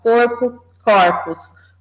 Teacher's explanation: tanto essa abertura da vogal quanto o acréscimo do S marcam o plural são duas marcas de plural e depois nós temos a com